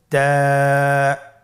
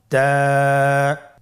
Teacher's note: জিহ্বার আগা সামনের উপরের 2 দাঁতের গোড়ার সঙ্গে লাগিয়ে উচ্চারিত হয়।